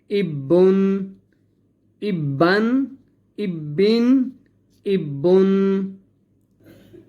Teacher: اب یہ 2 زبر 2 زیر 2 پیش ہے، ٹھیک ہے؟ اسے کہتے ہیں تنوین، اس کے آخر کے اندر نون کی آواز نکلتی ہے۔